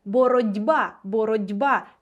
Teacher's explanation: глухий ть уподібнився під впливом дзвінкого б до д ще раз глухий звук уподібнився до дзвінкого наша те стала звуком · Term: уподібнення за дзвінкістю глухістю